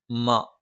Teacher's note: മ രണ്ടു ചുണ്ടും തുല്യമായി അടച്ചുവെക്കണം